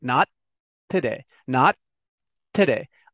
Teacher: I hold the T. I make the shape of the T, but I don't say it.